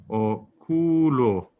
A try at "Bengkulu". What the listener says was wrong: With G after N. And in the last it's U, not O.